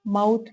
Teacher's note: واو ساکن سے پہلے زبر آ جائے تو واو لین ہوگا، اس کو لمبا نہیں کریں گے بلکہ نرمی کے ساتھ اس کو ادا کریں